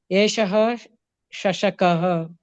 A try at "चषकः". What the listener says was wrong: Chashakaha, not Shashakaha. Cha. Chashakaha, it becomes